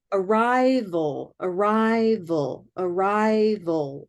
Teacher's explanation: Nice dark L in the back.